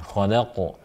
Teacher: qafnya huruf hidup, qa, tapi karena dibaca waqaf, maka disukunkan, khalaq. Nah ini termasuk qalqala kubra.